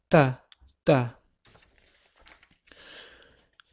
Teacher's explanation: tilimiz tepa tishimizni ortki tarafiga biroz tegib turadi. Yaʼni tish ortadan talaffiz qilinadi.